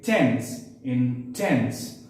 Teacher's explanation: So the syllable tense had a more prominent sound. It was louder than the first syllable